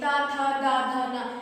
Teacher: ता था दा धा ना, ये आपके दंत से बोला जाता है। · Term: ता वर्ग